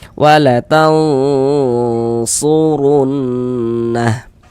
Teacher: maka huruf ro dibaca tabkhim dibaca tebal